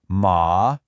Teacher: the third tone, which is really cool. It dips down and then comes back up